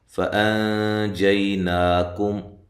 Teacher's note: حمزہ کو تحقیق کے ساتھ، اور یہاں نون ساکن کا اخفا ہے باریک۔ جئی یا لین ہے۔